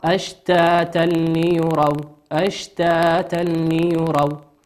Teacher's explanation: وقوله عز وجل أشتاتا ليروا، تنوين أتى بعده حرف اللام، واللام من حروف الإدغام بغير غنة